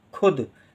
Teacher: खा के साथ ऊ का उच्चारण है, लेकिन कम देर के लिए है, तो छोटे ऊ की मात्रा खू।